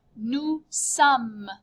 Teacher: Notice you just say some. End on the M sound. Do not add an E or an S.